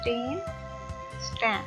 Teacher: अब यहाँ पे पी को देखें, पी भी आर्टिकल नहीं है इतना, और टी के साथ क्या करना है क्योंकि इससे पहले एस इसको फॉलो कर रहे हैं। एस फॉलो करने की वजह से ट का साउंड ट ही रहेगा, ठ नहीं होगा